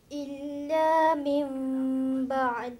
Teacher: Setiap nun yang ada atas mim, ataupun ada baris 2, ada mim di situ, maka apabila kita lihat, jumpa kepada huruf yang tanpa sabdu, atau itu saja katakan, maka terus kita baca dengan 3 tugas tadi. Tukar nunnya atau baris 2 tadi, jadikan mim, kemudian didengungkan, kemudian disembunyikan, diikhfakan. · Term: iqlab